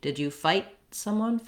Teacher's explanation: So I don't release it, not fight someone with a break, but rather the unreleased T.